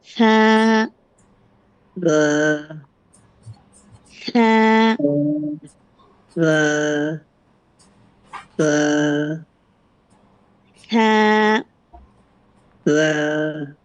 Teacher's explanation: জিহ্বার আগাটা সামনের উপরে, দুই দাঁতের একটু আগার সাথে, মানে আগাটা একটু বের করবেন, পুরোটা না, হালকা বের করে বলবেন।